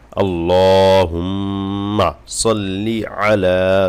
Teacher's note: সাল্লিতে টান হবে না লিতে জের আছে কোন ভাবে টান দেওয়া যাবে না